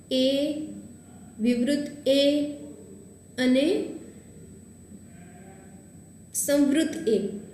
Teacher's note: જો જ્યારે તમે એ બોલો, એ, વિવૃત એ અને સંવૃત એ, આ ત્રણ જ્યારે બોલીએ ને ત્યારે જીભનો આગળનો ભાગ છે ને એ કંઈક અંશે કામમાં આવે છે. એટલે આ ત્રણ છે જીભના આગળના ભાગથી ઉચ્ચારાય છે.